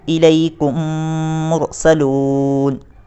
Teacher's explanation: میم آ رہی ہے، تو یہاں پر ادغام شفوی ہوگا، اور ادغام شفوی کو غنہ کے ساتھ ملا کر پڑھا جاتا ہے